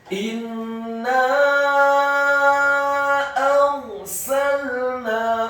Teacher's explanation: Karena setelah huruf nun ada alif, dan di atas harokat fathah huruf nun ada harokat bendera. Dan ingat, nun dan mim yang tasydid, gunnah atau dengungnya seperti mat atau panjang 2 harokat.